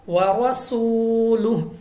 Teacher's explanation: रॉ पर ज़बर है, रॉ को पुर पढ़ना है। व रसूलुहु, वाव साकिन से पहले पेश, वाव मद्दा, हमने 2 सेकंड तक 2 अलिफ तक खींच कर पढ़ना है, और हा वाज़ह अदा होनी चाहिए।